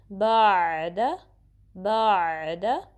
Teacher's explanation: उसके बाद बा को आइन से मिलाना है, ठीक है। बाद, आइन के लिए आवाज़ जारी हो जाएगी दरमियाने हलक के हिस्से से